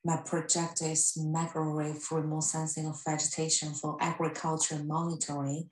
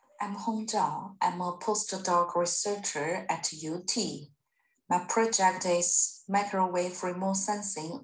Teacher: we can all understand what she's saying but it's all in this flat tone isn't it